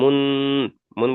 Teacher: তাই নুন সাকিনের আওয়াজকে নাকে তুলে একালিপ পরিমাণ গুণনা করে পড়তে হবে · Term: ইখফা